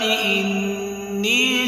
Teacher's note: انی، نون مشدد ہے، یہاں پر غنہ بھی کرنا ہے۔ یا ساکن سے پہلے نون کے نیچے زیر ہے تو یا مدہ، یعنی ایک الف کی مقدار کھینچنا بھی ہے۔